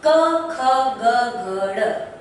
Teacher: मैंने इन वर्णों का उच्चारण किया तो हम पाते हैं कि ये वायु जो होती है हमारे कंठ भाग को दबा रही है